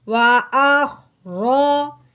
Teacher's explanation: رو کو موٹا کریں گے کیونکہ رو کے اوپر زبر جب پیش آ جائے تو اس رو کو موٹا کر کے پڑھتے ہیں